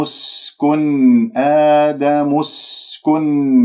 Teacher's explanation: الميم من كلمة آدم إلى السين اسكن، لأنه عندك همزة وصل، والسين يجري فيها الصوت والنفس من أحرف الصفير